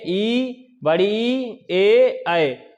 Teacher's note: जब अग्र स्वर का उच्चारण करेंगे तो जिह्वा दोनों दांतों से थोड़ी सी आगे निकलने का प्रयास करेगी